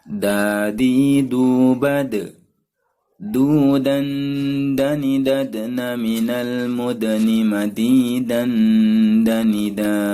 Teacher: Makhraj huruf da atau dal adalah punggung ujung lidah mengenai pangkal gigi seri atas sambil mengenai gusinya.